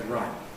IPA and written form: raɪt ̚ (right)